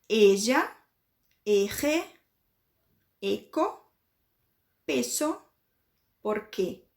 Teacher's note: Com o somzinho do E fechadinho